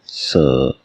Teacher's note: दंत सा का उच्चारण होता है स